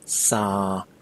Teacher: pronounce it with a Midway level tone and stretch it out